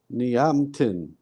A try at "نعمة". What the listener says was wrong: Okay, you're saying ni, which is correct. Then you're saying ya. Where's the ya? There's no. There's no ya. You just join to the ain. Ni'matin. Ni'matin.